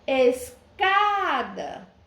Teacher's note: Sílaba tônica, o cá, classifico como paroxítona.